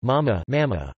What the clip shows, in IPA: ˈmamːa